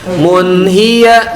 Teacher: mun tanwin menghadapi ha, itu namanya idhar